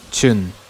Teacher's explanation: the T in tune becomes ch